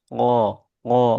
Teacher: Cara mengucapkannya dengan menyentuhkan pangkal lidah ke langit-langit yang lunak. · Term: huruf qof